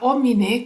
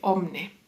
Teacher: la i dejó de pronunciarse y empezó a pronunciarse omne